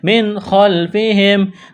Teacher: نون ساکن کے بعد خواہ ہے، حروف حلقی ہے، اظہار کریں گے، بغیر غننے کے پڑھیں گے